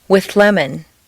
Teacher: see how the TH moves back and the L moves forward to meet in a new middle position